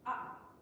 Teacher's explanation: the syllable is shortened by a brief glottal closure